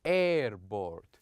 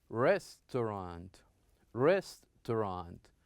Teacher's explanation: we need to stress, we need to emphasize on the beginning of this, this word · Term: first syllable